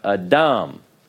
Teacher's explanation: you put the stress on the last syllable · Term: tone syllable